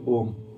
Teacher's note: जिस वर्ण के उच्चारण में 3 मात्रा का या बहुत ज्यादा समय लगे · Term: पलुत स्वर